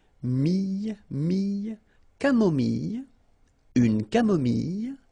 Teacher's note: when we get this I and then double L, it goes like y